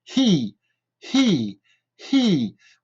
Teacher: Donc le H est toujours un H très aspiré